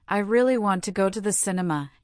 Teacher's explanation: you must try to say want to as the blended one that native speakers use, and stress the word really.